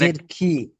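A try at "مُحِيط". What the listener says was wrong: খ নয়, এখানে হা ইয়া তজের হিত। মুহিত।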